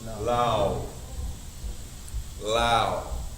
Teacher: La turns into or stays la. But now I have this la that's followed by wa sukoon. I have the rule of diphthong, which means turns into ow.